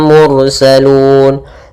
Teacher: ro yang dibaca dengan tebal salun Kemudian pada lafal Lun ada bacaan Mad Alif bukun yaitu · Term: tafhim